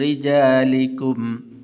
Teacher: را کے نیچے زیر ہے اس لیے باریک کر کے پڑھیں گے.